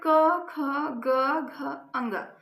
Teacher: इनका जो उच्चारण स्थान है वो है कंठ।